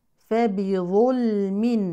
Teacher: نفخم الظاء ونعود للترقي مع اللام الساكنه المظهره